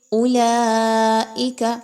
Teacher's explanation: مد واجب متصل ہے کھینچ کے لمبا کر کے اس کی ادائیگی رکھی جائے گی. کم مقدار نہیں رکھنی.